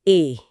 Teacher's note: जब आप अ और ई को तेजी से एक साथ बोलेंगे तो जुबान एक बीच का रास्ता खोज लेगी। वो ध्वनि है ए। ये एक समझौता है। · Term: गुण संधि